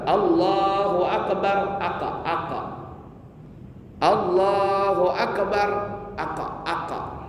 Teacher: orang membaca huruf kaf dengan qalqalah